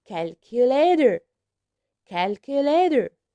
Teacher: here we pronounce letter T like d